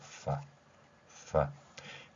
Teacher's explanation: 윗 니로 아랫입술을 물고 파 파이 소리가 되겠죠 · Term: 영어 F 소리